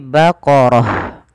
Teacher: huruf ta yang bentuknya bulat ini kita namakan dengan ta marbutah Apabila ada Ta marbutah di akhir bacaan ketika wakaf diganti dengan huruf ha